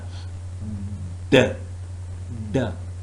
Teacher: Why? Because the tongue is completely blocking off airflow through the mouth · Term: oral stop